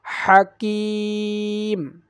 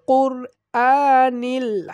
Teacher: কাফটা একটু পাতলা মতো উচ্চারণ হবে আর কফটা একটু মোটা মতো উচ্চারণ হবে, অর্থাৎ জিহ্বার গোড়া থেকে উচ্চারণ হবে।